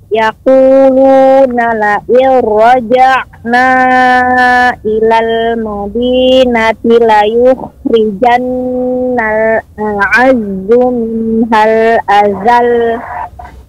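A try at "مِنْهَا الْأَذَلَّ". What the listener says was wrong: Nah, dia lebih tinggi lagi suaranya Ibu pada kata azal. Kita baca la yukhrijannal a'azzu minhal azal. Jadi tujuan kita membaca dengan nabar pada kata azal adalah menjaga makna agar benar-benar lamnya ini kita baca dua karena tasydid. Azal tidak sekedar azal namun azal.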